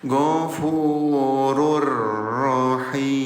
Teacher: Jadi yang asalnya bacaannya gfurun jadi lebur atau tempelkan ke huruf ro · Tuh, cara bacanya 0 harokat, dibaca lebur. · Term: idgham bila gunah